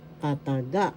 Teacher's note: The accent is in the third syllable.